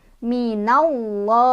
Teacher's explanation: Kalau di atas nih contohnya fathah, maka lafaz Allahnya dibaca tebal. Minallah. Jadi Allah bukan minallah, tapi minallah, tebal. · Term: tafkhim